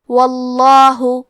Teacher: لفظ الجلالہ مطلب کلمت اللہ کے لام کو موٹی آواز میں پڑھیں گے